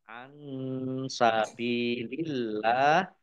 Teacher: nun sukun bertemu dengan huruf sin bacaan ikhfa dibaca samar-samar